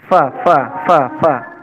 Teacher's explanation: jadi Va itu bibir bawah dengan ujung gigi atas Fafa sehingga Kalau ditemukan dengan bibir bawah banyak angin yang keluar dari celah-celah Gigi